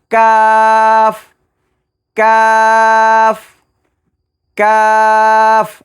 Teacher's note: কাফের মাখরাজ হলো জিহ্বার গোড়া থেকে একটু আগে বাড়িয়ে তার বরাবর উপরের তালুর সঙ্গে লাগায়া মধ্যখান পেঁচানো